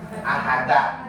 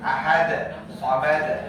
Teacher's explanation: Pantulannya ke arah fathah. Tapi pantulan bukan harokat ya.